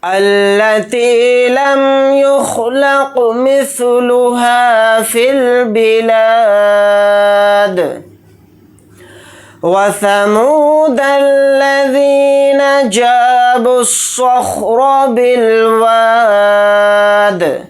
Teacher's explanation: ذال کے ساتھ یا مدہ ہے، ذال یا زیر ذی کو تھوڑا کھینچ کر پڑھیں گے، 1 الف کی مقدار ، نون کو جلدی پڑھیں